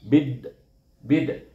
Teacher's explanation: Jadi bunyinya bid bid. Alif lam itu tak berbunyi. Yang bunyi ialah dal dengan ba ini. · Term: idiom samsi